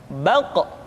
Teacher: Diucapkan dengan suara yang tebal dan dalam posisi sukun, maka terdengar pantulan suara. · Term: huruf Qaf